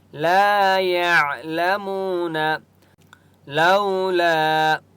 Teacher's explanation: الف مدہ ہے، لام کو ایک الف کی مقدار کھینچ کر پڑھیں گے